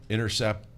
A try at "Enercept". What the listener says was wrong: ENERCEPT. ENER, intercept, not T, inner. ENE.